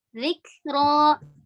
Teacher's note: ada sedikit hamas karena huruf kaf sukun